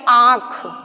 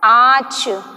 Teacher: इसमें कैसे, जैसे हम इसका एक एग्जाम्पल देख लेते हैं, जैसे कि हमारा ये आँख, ठीक है, आँख हो गया, आँच, इस तरह में ये क्या है, ये हमारी तो ये हमारे मुंह और नाक दोनों से उच्चारित हो रहे हैं, इसलिए ये कैसे हो गए, अनुनासिक स्वर हो गए।